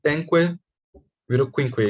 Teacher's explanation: E um exemplo histórico que aconteceu no proto-indo-europeu, na Revolução Proto-Indo-Europeu para as línguas modernas, é o da palavra cinco, que penque virou quinque. Então, o pa assimilou para qua, uma assimilação distante e regressiva, para quinque, que virou o português cinco.